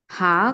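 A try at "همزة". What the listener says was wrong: లేదు, ముందు ఈ అక్షరం తప్పు చెబుతున్నారు మీరు. దీని పేరు తప్పు చెప్పారు. హంజా హంజా దాని పేరు, హా కాదు.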